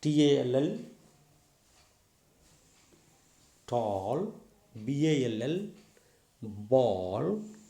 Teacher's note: this is L, alveolar voiced lateral